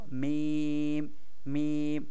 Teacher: ঠোঁটের যে দুই অংশ মিলিত হয় সেইখান থেকে সেই দুইটা অংশকে শুকনা স্থান বলে ওইখান থেকে আমাদের মিম উচ্চারণ হবে